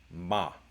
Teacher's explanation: it's like an M, but it's slightly different because it's labiodental.